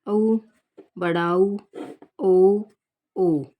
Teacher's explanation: वृत्ताकार स्वर में देखिए, उच्चारण में होठों की आकृति वृत्त के समान होती है, मतलब गोल होती है।